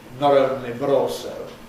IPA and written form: ˈnɒɾ ˈoʊnli bəɾ ˈɔːlsoʊ (not only but also)